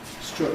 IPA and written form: strʊt (strut)